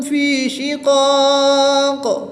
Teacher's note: وقف کی حالت میں یہاں پر مد عارض ہوگی اور قاف وقف کی حالت میں ساکن ہو جائے گی تو اس لیے یہاں پر قلقلہ ہوگا